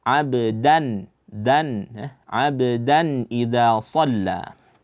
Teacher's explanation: Jangan dibaca abu, tapi abda. Da itu keluarnya dari ujung lidah berjumpa dengan pangkal gigi seri, bukan dengan langit.